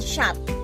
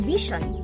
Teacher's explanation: post-alveolar consonants are those that occur when the tongue blocks or constricts airflow at the point just beyond the alveolar ridge